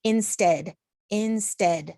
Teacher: stead is a little bit louder has a little bit different of a sound to it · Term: stressed